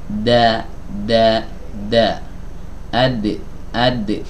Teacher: ujung lidah bertemu dengan pangkal gigi seri atas ya lidah belakangnya Rileks aja jangan diangkat kalau diangkat Jadi ini nanti jadi huruf th ya da da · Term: huruf Dal